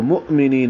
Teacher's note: کنتم مؤمنین میں حمزہ ساکن جھٹکے سے پڑھا جائے گا، کیونکہ حمزہ ساکن جب بھی ہوتا ہے تو اسے جھٹکے سے ہی پڑھا جاتا ہے قراءت حفص میں.